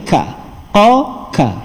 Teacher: Ingat balik, qaf tadi belakang, depan sikit daripada tempat yang tadi, ka, qa, ka. Tapi kedua-duanya menggunakan bahagian pangkal lidah yang diangkat ke lelangit lembut